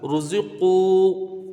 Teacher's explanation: پہلے کوئی پر حرف ہو تو واو مدہ بھی پر ہوگا، تو یہ قاف کے ساتھ واو مدہ بھی پر ہوگا، ایک الف کی اس کی مقدار رکھیں گے